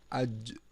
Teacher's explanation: اب یہ دیکھیں یہ قلقلہ، جیم قلقلہ ہے تو اسے اس جیم کو ہلائیں گے، اج۔